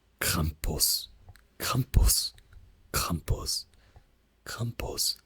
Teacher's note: the stronger R sound, right? The like really cold, like French R sound